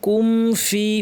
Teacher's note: খেয়াল করে মিমটাকে গুন্না সহ কমপ্লিট করতে হবে গুন্না বাড়ানো যাবে না নরমাল গুন্না কিন্তু করতে ফি যেন প্রচুর আওয়াজ বাতাস থাকে স্পষ্ট ফেসফেস আওয়াজ